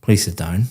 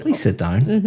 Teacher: very flat intonation going down